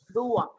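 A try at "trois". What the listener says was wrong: It is not D, it is T. So it has to be pronounced as Tua. T.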